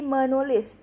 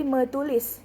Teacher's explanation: Maka sistem morfofonemik mengatur bahwasannya awalan me dia akan berubah menjadi men jika bertemu dengan fonem dengan awalan huruf T, dan fonem T ini akan diluluhkan.